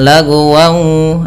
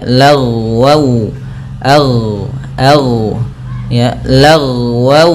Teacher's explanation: lafal ghain ketika dia sukun jangan sampai memantul, karena huruf ghain tidak ada sifat qalqalahnya, maka jangan lagwau, akan tetapi dia lagwau, ya, lagwau.